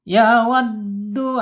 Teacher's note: ya wad tekan ya ditekan penekanan di dal karena bertasjid